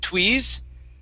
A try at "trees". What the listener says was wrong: the TR sounds like a CHR. So instead of tweeze, it's chur, trees.